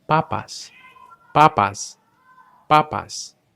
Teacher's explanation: Do you notice that puff of air? Well, in Spanish, we just don't make it.